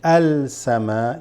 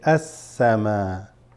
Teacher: samawati is huruf shamsiyah, which means you don't say al-sama, you say as-sama